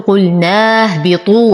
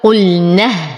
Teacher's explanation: أنتقل من فتحة النون إلى إسكان الهاء، حرف المد يسقط، وهمزة الوصل أيضا ساقطة في درج الكلام، ولو ابتدأت بها مكسورة.